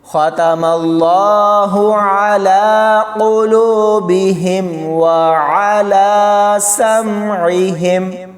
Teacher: اس خا کو موٹا پڑھیں گے اور اللہ کی لام کو بھی موٹا پڑھا جائے گا۔